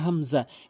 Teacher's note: আপনি হামজাটি হলকের শুরু থেকে উচ্চারণ করবেন